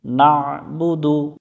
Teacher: এখানে আইনটা গলার মধ্য থেকে একটু চেপে উচ্চারণ করব